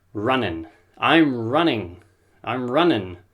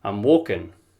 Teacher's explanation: I drop the G off the end